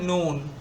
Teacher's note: জিহ্বার অগ্রভাগ তালুর সাথে লাগিয়ে উচ্চারিত হয়